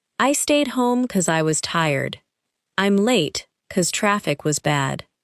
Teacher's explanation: Another common reduction is because becoming cause in casual speech. · You may also hear because pronounced very quickly without the first syllable standing out. This is normal conversational speech.